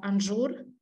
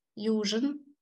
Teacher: there is a shift of z to zh